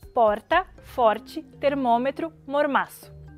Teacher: Para pronunciar esse RTEP, a ponta da língua faz um contato breve com o arcada alveolar atrás dos dentes de cima.